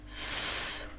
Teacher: Коли ми вимовляємо цей звук, повітряний струмінь не може вільно вийти із ротика, бо зустрічає перешкоду. Язичок опускається вниз за нижні зубки. Губки усміхаються. Холодний і тоненький повітряний струмінь виходить через маленьку щілинку між зубками і свистить наче насос.